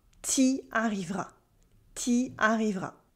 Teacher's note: we cut the U in tu before a vowel.